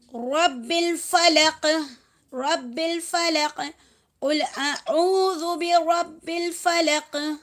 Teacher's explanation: قاف کے اوپر قلقلہ لینا ہے